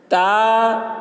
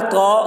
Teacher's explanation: تا کی آواز پتلی ہوتی ہے اور قا کی آواز موٹی ہوتی ہے۔